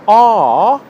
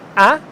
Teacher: for /a:/, it comes from the back of my mouth and for /æ/, my jaw comes forward and the sound comes from the front of my mouth